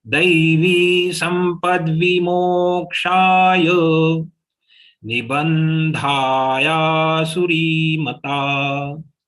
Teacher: So when the short letter like sampad vi, they are to be pronounced fast and we should reach to mo. Mo and ksha to be stretched extra.